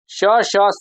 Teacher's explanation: श, श, स को दोस्तों अघोष महाप्राण कहते हैं